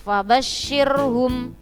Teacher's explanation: Kita perhatikan ada ro sukun, itu kita lihat harokat sebelumnya adalah kasro, maka ro sukunnya tadi dibaca tarkik. Tarkik artinya tipis. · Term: ro tarkik